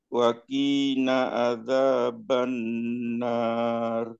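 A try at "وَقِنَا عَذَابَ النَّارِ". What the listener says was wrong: Ulangi. Waqina. Q-nya pendek.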